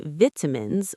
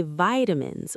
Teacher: In the UK, they say vitamins with a short I, but in the US, they say vitamins with a long I.